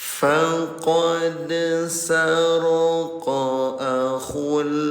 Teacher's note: Dal dalam keadaan sukun. Namanya qalqalah. Cara bacanya pantulkan ya.